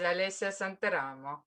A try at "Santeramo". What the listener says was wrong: You see, the accent is wrong. It's Santeramo.